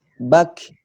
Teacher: untuk huruf kafnya sendiri ketika dia disukunkan itu hams. Jadi dia seperti ada udara yang mengalir dari mulut. Jadi kayak bak.